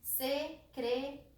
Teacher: A sílaba forte é secretaria. É o ri. É a penúltima. É uma paroxítona terminada em A.